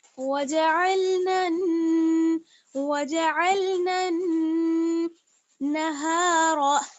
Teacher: आगे है वजअलना नहार मआशा, वाव जबर वा, जीम जबर जा, वजअन, लाम जबर अल, वजअल। अब नून को हम नून से मिलाएंगे तो गुन्ने के साथ मिलाएंगे, क्योंकि जब नून पर जब नून पर तशदीद आ जाती है तब वहां पर हम गुन्ना करते हैं।